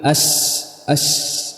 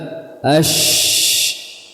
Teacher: Maka kita bisa fahami bahwa huruf shin dia makhrajnya tidak rapat dan dia memiliki sifat tafasyi, yaitu apa? Intisyarus saut, intisyarul hawa, menyebarnya udara di mulut